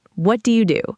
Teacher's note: Said in a flat neutral tone, it can sound almost like an interrogation.